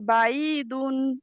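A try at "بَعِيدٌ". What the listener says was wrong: আইনের উচ্চারণটা পারফেক্ট হচ্ছে না। বাঈদুন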